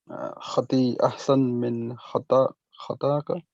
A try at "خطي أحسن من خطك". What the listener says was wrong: Why خطاك? There's no alif there. If there was alif, then you'd see a gap after the alif and after the kaf. So it's not خطاك, and also you have harf al-jar here. So خطي أحسن من خطك. خطك.